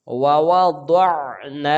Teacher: نون کو ایک الف کے برابر کھینچ کے پڑھیں گے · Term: الف مدہ